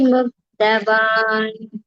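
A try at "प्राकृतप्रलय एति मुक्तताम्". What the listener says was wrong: முக்ததாம் அது முக்தவாம்னு கால்ல விழுந்தது. பிராகிருத பிரலய ஏதி முக்ததாம். मुक्तताम्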